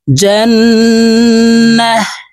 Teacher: ওয়াকফের ক্ষেত্রে হার উচ্চারণ হবে এবং হাকে সাকিন করে ফেলবো